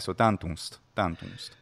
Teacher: Without closing the lips all the way before the S. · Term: nasalization